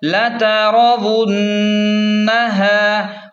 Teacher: ہاں کو ایک الف کے برابر کھینچیں کیونکہ الف مدہ ہے